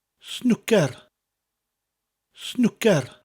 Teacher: Snooker in Welsh, similar to the English. It's snooker with a rolling R, and each syllable is said evenly.